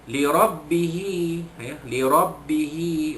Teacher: ra itu baris atas dibaca tebal, tafkhim